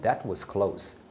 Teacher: a palavra close deve ser pronunciada com som de S. Não é o close do verbo fechar.